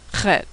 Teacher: Chet is pronounced ch, a throat-clearing noise that doesn't occur in English. It's like in ach in German, or loch in Scottish.